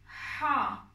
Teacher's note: Ha harfi kalın bir harf. Gırtlak zorlanarak söyleniyor. Hırıltılı bir şekilde kalın ve tok bir şekilde söyleniyor.